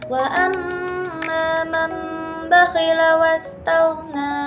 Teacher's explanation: mengganti bunyi nun sukun atau tanwin menjadi bunyi mim mati disertai dengan yang samar. Terjadi saat nun sukun [musik] atau tanwin bertemu satu huruf yaitu ba. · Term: iqlab